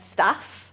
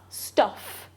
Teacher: It doesn't look like it on the chart, but in terms of where they're produced in the mouth, they're both short vowels and they're both kind of centralised and low